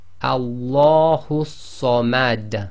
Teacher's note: Okay, so the dal that is carrying the dhamma becomes sakin, and because it's one of the qalqala letters, then it's read with an echo